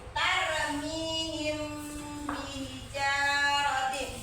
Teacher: mim mati berjumpa dengan ba jadi kan dibaca hurufnya samar antara ba dengan huruf mim